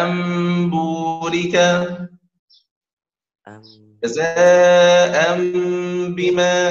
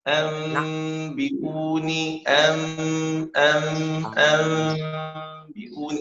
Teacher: أولا نجعل النون ميم. ثانيا إخفاء الميم في الباء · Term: اقلاب